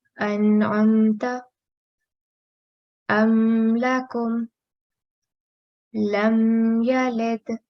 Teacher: If Noon Sakin or Tanween is followed by an Izhar letter, it's pronounced clearly without sustained nasal sound